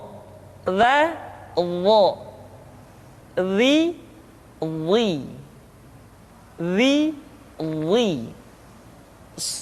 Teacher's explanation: diucapkan dengan menyentuhkan ujung lidah dengan dua gigi seri bagian atas